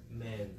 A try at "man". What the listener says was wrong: Good, open more. Ah, man.